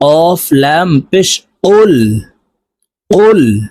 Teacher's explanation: অফ হরফ জিব্বার গোড়া থেকে উচ্চারণ করতে হবে